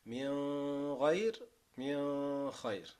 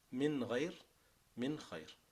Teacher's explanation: For those of you who studied the تحفة الأطفال, these 6 letters are agreed upon, although some of the scholars, like if you read the qira'ah of Abu Ja'far, for example, he reads the ghain and the kha with the ikhfa, right? So he will say min ghayr min khayr.